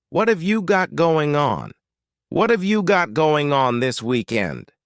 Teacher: that final g in the word going is going to be cut off and we'll just say going let's try to say that all · what and have are going to be pushed together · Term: reduction